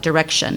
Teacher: when you say the word Direction the last syllable is just what we call a schwa it's like direction it's just kind of a sound and when